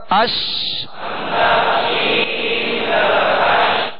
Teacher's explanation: آواز کا منہ میں پھیل جانا اس کی خوبی ہے، اور اس خوبی کا نام ہے تفشی · حمزہ شین زبر اش، کیونکہ اس حرف کے اختتام جو ہے اس کے مخرج ہی پر ہوگا، اور اس کی شین کی ادائیگی میں آواز منہ میں پھیل جائے